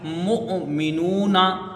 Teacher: हमजा जहां पर भी साकिन आता है तो वहां पर इसको झटके से अदा किया जाता है